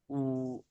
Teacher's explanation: Dia itu sempurna pengucapannya itu dengan kita mengumpulkan bibir kita di depan. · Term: wau